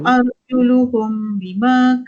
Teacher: Arjuluhum mim bertemu dengan ba. Apa hukum dia? Ifa syafawi. Bacaan dia kena dengung.